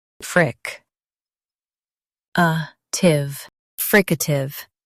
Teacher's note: Emphasize fric and soften a tive.